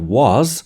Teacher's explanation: there's no obvious reason that the word was ends in the voiced sound